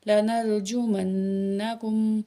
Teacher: نون میں شد ہے، یہاں غنہ کریں گے